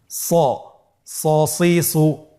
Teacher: হরফটি যেহেতু মোটা অক্ষর, এই হরফটি সা বলা যাবে না, স বলতে হবে, একটু মোটা করে বলতে হবে